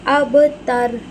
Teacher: رو کو ساکین کریں گے وف کی وجہ سے، لیکن ہم اسے ایسے پڑھیں گے اب تر. یاد رکھیں رو کو موٹا کرنے کے چکر میں تا کی آواز تو میں کنورٹ نہ ہو جائے. تا کو باریک ادا کریں گے اور رو کو موٹا ادا کریں گے.